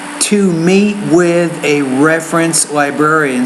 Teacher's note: You want to say there the T, to meet with a reference librarian. So the T sound, you need to pronounce more as a T, not as a D.